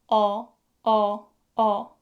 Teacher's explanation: your tongue should be positioned toward the back, not front, back.